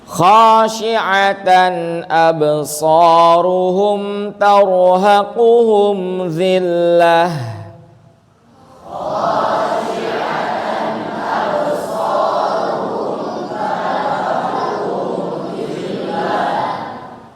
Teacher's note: Tanwin ketemu hamzah, dibacanya jelas, dibaca id.